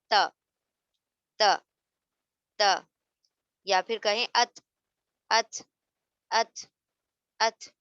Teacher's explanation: जबान की टिप यानी टिप ऑफ द टंग, जबान की नोक को दांतों की ऊपर के दांतों की जड़ से टच कर रहे हैं, तो त अदा हो गया।